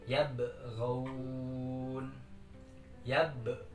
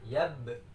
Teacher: Yabghaun. Yab, huruf ba-nya tetap memantul